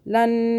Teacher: نون مشدد پہ گننا بھی 2 سیکنڈ کا لازمی کرنا ہے